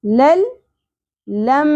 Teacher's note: میم مشدد ہے غنہ ہوگا. آواز کو ناک میں ٹھہرائیں گے